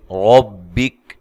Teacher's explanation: ربک وقف کی صورت میں کاف کو ہلائیں گے نہیں. ربک بھی نہیں پڑھیں گے.